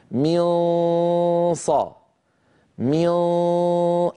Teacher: هو صويت سببه عدم قفل المخرج. من صا، من، أغلب الصوت من الخيشوم وقليل منه يمر عن طريق الفم